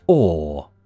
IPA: ɔː